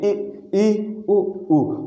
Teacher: जब आप ई का उच्चारण ई उ का उच्चारण करेंगे दोस्तों तो आप देखेंगे कि मुख बहुत कम खुल रहा है। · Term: समृत स्वर